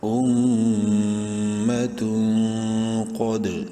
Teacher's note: قوف کو خوب بولڈ کر کے اور دال میں قلقلہ کریں گے، ساکن ہے اور حروف قلقلہ میں سے ہے.